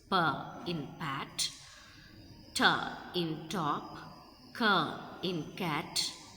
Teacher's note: Voiceless sounds which proceed without vocal cord vibration. Only airflow creates the sound